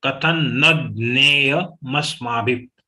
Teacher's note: But give stress on na because there is a joint letter of nya.